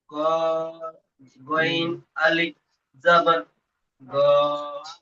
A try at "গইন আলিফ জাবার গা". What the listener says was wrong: গইন অক্ষরটা এক আলিফ টান হয়, তিন আলিফ টান হবে, আলিফ থেকে এ পর্যন্ত যে গইন পড়েছিলেন অক্ষরে টান দিয়ে পড়েন, তারপরে আলিফ যুক্ত করবেন। গইন